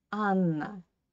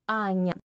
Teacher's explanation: the full name Anna is hard in Russian language, yeah? And the nickname Anya is soft.